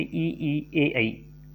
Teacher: जिन स्वरों के उच्चारण में जिह्वा का अग्र आगे का भाग सक्रिय रहता है उन्हें अग्र स्वर कहते हैं